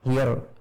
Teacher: Ro dalam bahasa Inggris, hear atau semacam itu, jadi ro-nya tidak terdengar ada getarannya